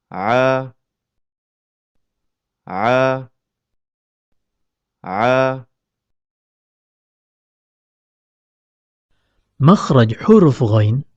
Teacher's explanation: tatkala melafatkan huruf Ain epiglotis merapat ke dinding tenggorokan sehingga mempersempit keluarnya huruf